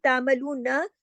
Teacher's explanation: नून ज़बर ना, बस एक हरकत, इसको लंबा नहीं करना वरना इसके साथ अलिफ लग जाता है। अब इसको अगर तामलूना ऐसे कर देंगे तो ये इज़ाफ़ी हर्फ हो जाएगा।